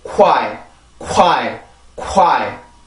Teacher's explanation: 이게 W라는 전이음은 입술이 이렇게 모인 그 앞으로 요러는 소리이기 때문에 K 발음에서 빠르게 W로 넘어가게 되면 요런 소리가 만들어지게 되죠. 그래서 이게 quiet 이게 아니라 quiet 요렇게 소리가 됩니다.